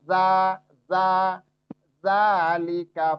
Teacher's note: za tipis sifatnya istifal